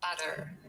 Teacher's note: Americans very often will say butter so instead of a full T they just do a little flap T